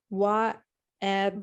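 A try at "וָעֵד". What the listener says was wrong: Va, va. Just so that everybody understands, there is no W in Hebrew. There's no W.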